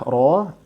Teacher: lihat saja yang menengah ke atas ada fathah, ro, ada dhammah, ru, maka ini dibaca tebal, ya, kembali kepada kaidah yang di atas.